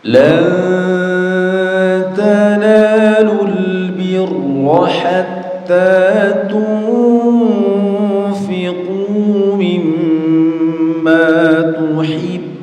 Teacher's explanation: di kalimat al-birrah, ra-nya ini dibaca tebal atau dalam istilah tajwidnya disebut dengan tafkhim